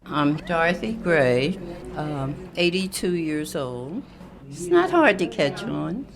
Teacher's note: she also talks calmly and her voice goes down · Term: falling intonation